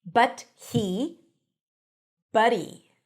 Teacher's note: The T becomes a flap T, the H drops,